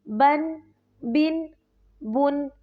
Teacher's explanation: ناک میں آواز جائے گی، اس میں تنوین میں غنہ ہوگا